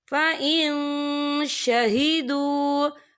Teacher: यहाँ देखिए फ़इन, यहाँ नून साकिन है, नून साकिन के बाद जो है शीन आ रहा है, और शीन जो है इक्फा का वर्ड है, तो हम यहाँ इक्फा करेंगे। नून साकिन की आवाज को नाक में छुपाएंगे।